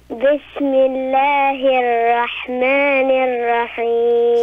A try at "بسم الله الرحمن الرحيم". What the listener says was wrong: So for the ra, when you say Bismillah, make sure to make the ra, make it heavy, okay? Like make it fat. Bismillahir ra. Bismillahir Rahmanir Rahim.